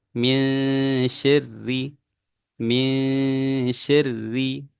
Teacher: ikhfa hakiki ya itu adalah durasinya 2 harokat ya